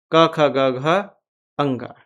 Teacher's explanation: क वर्ग ह और विसर्ग का उच्चारण कंठ से ही होता है